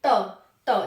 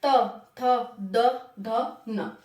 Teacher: जीव दांतों को टच करती है